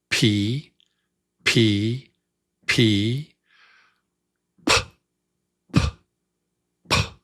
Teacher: A little puff of air each time. Just a little puff.